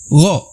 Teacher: huruf yang berasal dari tenggorokan atas adalah huruf Gho dan huruf Kho